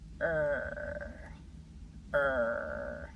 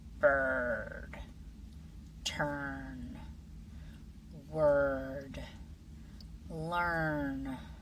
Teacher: the R blends with the vowel into one smooth sound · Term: r-controlled vowel